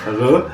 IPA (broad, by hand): ʟ